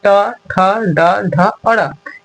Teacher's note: ट, ठ, ड, ढ, और र इसको हम लोग मूर्धा की सहायता से बोलते हैं।